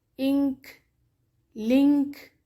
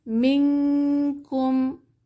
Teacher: نون کی آواز کا خیشوم میں اخفا کیا جائے گا